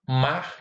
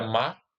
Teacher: o TEP ou o rótico forte, né, o R, é apagada quando está no final de palavra